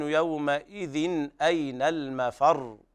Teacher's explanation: وهنا الراء مشددة لا بد من تضعيفها حال الوقف. نعم، يقول أين المفر، ولا يقول الإنسان أين المفر، هي لا تتساوى مع الراء المخففة، بل هنا مضاعفة لا بد من بيان التشديد فيها.